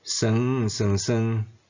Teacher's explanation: 头字伫讲甲读拢爱变做第一声调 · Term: 三连音